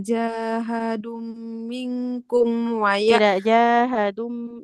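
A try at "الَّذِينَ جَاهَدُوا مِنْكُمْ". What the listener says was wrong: jangan ditahan di mim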